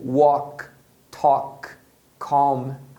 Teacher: Às vezes o L não é pronunciado, somente o som da vogal que é O, em palavras como walk, talk, calm.